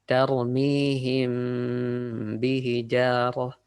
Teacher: غنة is the sound from the nose. The غنة we need to hold for about 2 counts. It depends how you count it, 2 or 3 counts.